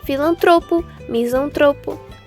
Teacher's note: paroxítonas penúltima sílaba tônica